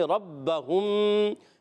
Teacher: ربہم میں، رب میں را زبر والا ہے تو اسی لیے را پر پڑھیں گے، ربہم، با مشدد ذرا رک کر ادا کریں گے